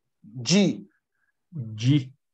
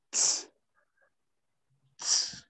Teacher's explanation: Que é o som do D feito no mesmo local que o som do T, só que com menos energia.